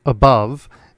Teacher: In English, the schwa, as in the word above, is a central vowel.